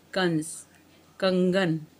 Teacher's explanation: इसका स्थान स्वर के बाद और व्यंजन से पहले होता है, इसे हम अयोगवाह कहते हैं। अंग इसे अनुस्वार कहते हैं। इसका उच्चारण नाक से होता है